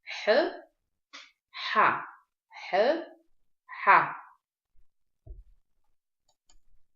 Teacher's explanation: Еще раз давайте напомним себе, что букву Х мы с вами произносим за счет того, что сужаем голосовые связки и выдыхаемый воздух пропускаем с большим трением